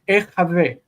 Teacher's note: the nun is supposed to assimilate into the chet, but it doesn't, and so instead it lengthens the vowel in front of it. This is compensatory lengthening.